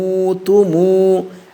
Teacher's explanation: মিম উচ্চারণ হয় দুই ঠোঁটের শুকনা জায়গা থেকে